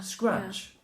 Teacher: So, t plus the sh makes ch, as in chimenea.